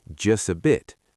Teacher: The T in just often disappears completely, and the words flow together as just a bit.